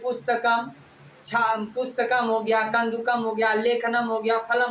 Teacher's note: अनुस्वार, अनुस्वार को संस्कृत में म बोलिए